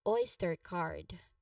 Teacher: Uh, you know, a relaxed a sound followed by a clear r. Card has a long a sound similar to the a in father and ends with a distinct d sound